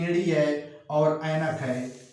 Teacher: एड़ी ऐनक में कोई वृत्त नहीं बनती है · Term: अवृतमुखी